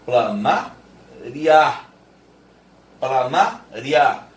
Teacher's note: Veja como que é uma semivogal e uma vogal. Porque a boca está abrindo e o ditongo é crescente. · Você vai abrir a boca para falar o A. Aí no meio do caminho, você fala o I. No meio do caminho, você fala o I.